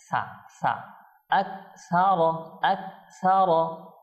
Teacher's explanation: অনেকেই জিহ্বা বাহির করে দেয় সা কিন্তু এটা ঠিক না তো আমরা জিহ্বা বাহির করবো না দাঁতের উপরে দাঁতের ভিতরের অংশে লাগাবো